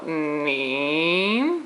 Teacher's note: Nin starts very low. Nin, but goes up just like the thing here.